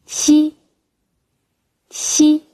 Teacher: 舌尖抵住下门齿背根部，舌面前部接近上颚，舌面和上颚之间留一道窄缝，让气流从缝中摩擦而出